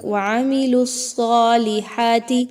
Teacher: لام کو جب آپ صاد کے ساتھ ملائیں گے تو صاد موٹا حرف ہے، اس لیے اس کو مضبوطی کے ساتھ پڑھا جائے گا، جماؤں کے ساتھ۔